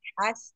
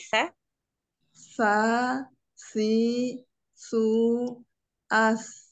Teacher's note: adanya aliran udara namanya hams